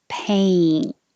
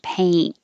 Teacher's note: You're starting in the middle, and going to E. A. So you should feel your tongue rising.